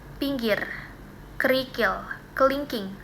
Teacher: Ee posisi lidahnya itu di depan tapi sedikit lebih turun. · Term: vokal tinggi bawah depan